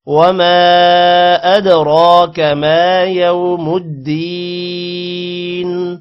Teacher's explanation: ادراک دال پر قلقلہ ہوگا را پر کھڑی زبر ہے لمبا کریں گے اور را کو موٹا بھی کریں گے